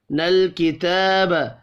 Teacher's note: کھڑی زبر کو بھی ایک الف کے برابر کھینچ کر پڑھیں گے